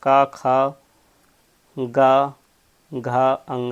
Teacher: कंठ वाले आपके कौन से होते हैं? क वर्ग होता है